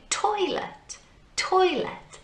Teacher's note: Toy is where we put the emphasis in our voice, in the sound that we make.